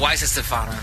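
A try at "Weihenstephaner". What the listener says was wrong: He's adding more syllables every time.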